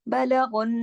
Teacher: गैन को आपने मोटा पढ़ना है और नून मुशद्दद है, बलगुन, यहाँ भी इदगाम ताम बिल गुन्ना, यानी ऐसा इदगाम जिसके अंदर भरपूर गुन्ना हो रहा है।